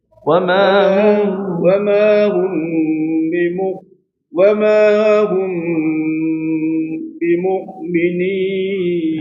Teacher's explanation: antara mim sukun dengan ba ini baru terjadi ikhfa syafawi, maka dibaca minimal dua harakat juga.